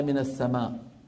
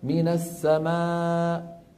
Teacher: الحالة الرابعة عند الوقف على همزة مسبوقة بحرف مد أو لين، لما بدنا نوقف على من السماء، من السماء لا بد من قفل الوترين وفجأة هكذا حتى تظهر الهمزة